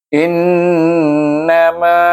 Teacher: nun bertasydid, baca dengan wajib gunnah 2 harakah. Dan ma, pasal apa ma tu dibaca 2 harakah panjang, iaitu sebab dia mim baris atas bertemu dengan alif.